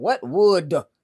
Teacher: you have to almost hit them with another syllable, would, in order for the D to go all the way to that audience and that last row. It'll sound normal.